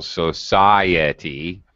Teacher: example in a word like uh for for example Society um the I and the at are both pronounced but we separate them with what's called a Glide a y or a w sound